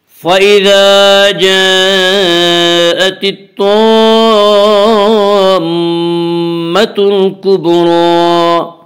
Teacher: الطامہ میم مشدد غنہ ہوگا، غنہ کی مقدار 1 الف ہے۔ الطامة الکبریٰ، با حروف قلقلہ میں سے یہاں پہ با میں قلقلہ ہوگا۔